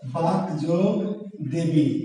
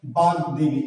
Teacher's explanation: অঘোষ বর্ণ যদি ঘোষ বর্ণে পরিণত হয় তাহলে এই পদ্ধতির নাম কি? ঘোষী ভবন।